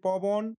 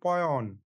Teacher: এখানে ব ব্যঞ্জন ধ্বনিটি অ এবং অ এর মধ্যবর্তী স্থান থেকে লোপ পেয়েছে